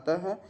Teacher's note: तो विसर्ग क्या होता है, विसर्ग स्वर के बाद आने वाला ये विसर्ग जो होता है स्वर के बाद आता है, अतः यह व्यंजन वर्ण है। इसका उच्चारण कंठ से होता है। इसके उच्चारण में ह की ध्वनि निकलती है।